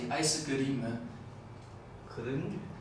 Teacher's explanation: there are also voiceless vowels in Japanese, so sometimes sometimes it kind of vanishes a bit.